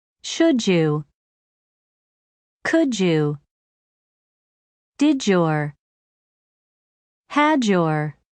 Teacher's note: when a word ends with d and the next word begins with Y the combination of the two sounds changes to a j sound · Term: linking